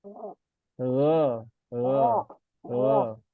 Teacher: kalau go itu kan berarti ada di tenggorokan atas ya. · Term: ghoin